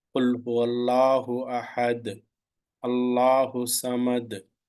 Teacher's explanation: You are stopping it as quickly as possible because it is not having mad or lean before the last letter.